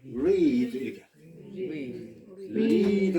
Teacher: 영어에서 이 R이라고 쓸 때는 영어는 가령 read 그러니까 할 때는 혀가 입천장을 건드리지 않죠. 혀를 엉거주춤 이렇게 띄우고 있기 때문에 영어 발음하는 분들도 read 이렇게 read 같으면은 리드를 잘해야 된다.